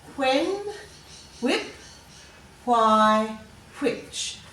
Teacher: when we hear wh, where there's air after the W, we have to put an H.